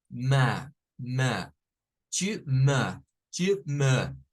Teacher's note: esta o va a sonar con a O sea la que es como una a mezclada con o